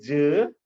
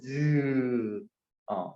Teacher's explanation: 뭔가 막았다가 터트리면서 확 터지진 않고 마찰로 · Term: 파찰음